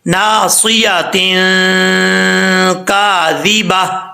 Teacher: تو یہاں پہ نون تنوین کا اخفا ہوگا، اور ایک الف کی مقدار جو ہے یہاں غنہ کر کے پڑھیں گے